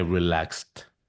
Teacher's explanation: pronunciada como una combinación de dos consonantes que son la K y la S, de los cuales ninguno de los dos produce vibración en tus cuerdas vocales